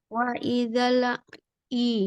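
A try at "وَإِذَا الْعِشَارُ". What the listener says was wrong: Jangan dilepas. Lidah makhraj lamnya jangan dilepas dulu sebelum pindah ke ai. Wa idzal, langsung lanjut. Idzal ai.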